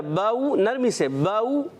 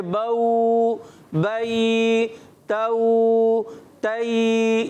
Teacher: کھینچنا نہیں ہے, حرف لین کو بغیر کھینچے, بغیر جھٹکا دیے معروف پڑھتے ہیں, نرمی سے پڑھتے ہیں